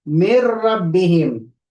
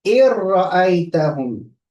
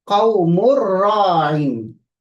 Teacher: the second type of the idgham is the examples of with no nasal sound, completely remove the noon